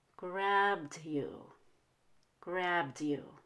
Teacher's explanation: you could also whisper the D since it comes after a b sound